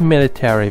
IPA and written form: ˈmɪl.ə.ter.i (military)